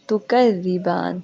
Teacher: ذال کے اوپر تشدید ہے، نرمی سے ادا ہوگا، اور با کے اوپر کھڑا زبر ہے، اس کو ہم 2 سیکنڈ، 4 سیکنڈ یا 6 سیکنڈ لمبا کر سکتے ہیں.